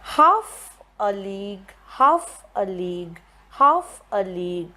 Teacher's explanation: if you put the stress marks you would stress on half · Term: dactylic